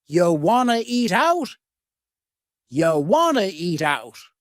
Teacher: we have reduced want to become wanna. This is a common reduction in English.